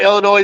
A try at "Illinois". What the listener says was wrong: Illinois. There's no S.